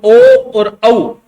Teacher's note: ओ और औ, ये होठ का भी हो रहा है और कंठ का भी हो रहा है, इन दोनों का इसमें उपयोग किया जाता है।